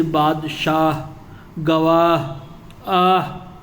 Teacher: اس ہا کو ہائے ملفوظی کہتے ہیں جو تلفظ میں شامل ہے اور صاف طور پر پڑھی جاتی ہے